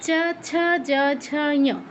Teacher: তো জিওভাটা তালুতে স্পর্শ করে আমাদের তালব্য বর্ণগুলো উচ্চারণ করতে হয়।